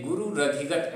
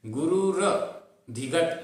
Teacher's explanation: अब ये रधिगत में रा का उच्चारण पूरा हो इसलिए गुरु रधिगत ऐसा बोलते हैं, गुरु र धिगत ऐसा नहीं बोलते।